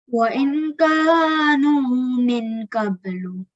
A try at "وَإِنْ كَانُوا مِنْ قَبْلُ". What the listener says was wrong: Okay, so when you conceal it, we don't read it fully. We stop midway. So وَإِنْ كَانُوا مِنْ قَبْلُ.